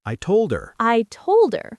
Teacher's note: the D in told directly connects to the E in her.